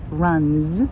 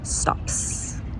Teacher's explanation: If it ends with another voiced sound, say the voiced z sound, like runs. And if it ends with an unvoiced sound, say the unvoiced s sound, like stops.